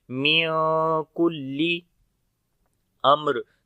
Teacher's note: میم ساکن کے بعد را آ گیا تو میم کی آواز کو بھی ظاہر کر کے پڑھیں گے، اظہار شفوی ہوگا · آگے نون ساکن کے بعد کاف آ گیا، اخفا کریں گے، باریک اخفا ہوگا